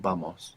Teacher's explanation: in many places generally in the Spanish-speaking world it's like a soft B